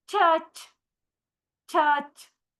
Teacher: a combination of both plosive and fricative, in which sound is produced by the blocking of air and finally releasing it through a partial passage. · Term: affricate